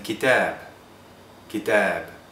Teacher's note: It's a bilabial voiced consonant, which means it's pronounced with both lips and your vocal cords are vibrating while you say it.